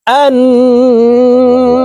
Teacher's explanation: প্রিয় দর্শক, এখানে আলিফের উপরে জবর নাই, আমরা জবর দিয়ে হামজাহ বলে এই তাসদিদওয়ালা নুনের সাথে নাকের বাসি থেকে গুন্নাহ করে 3 সেকেন্ড পরিমাণ গুন্নাহ করে ধরে রাখবো।